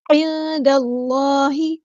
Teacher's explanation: صرف اللہ کا جو لام ہے اس کو موٹا یعنی ہیوی ادا کرنا ہے۔ دال کو ہم لام کے ساتھ ملا دیں گے، حمزۃ الوصل ہمارا ڈراپ ہو جائے گا۔